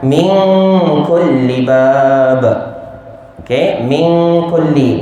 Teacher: nun sakinah bertemu dengan kaf, dibaca dengan dengung 2 harakat ikhfa haqiqi